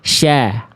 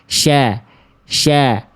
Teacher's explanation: ini shin nih, ujung lidahnya nggak ke gigi sari bawah